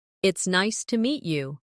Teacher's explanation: Stress nice and meet to make it sound warmer.